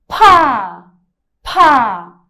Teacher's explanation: Com muito ar da boca, saindo, aspirado.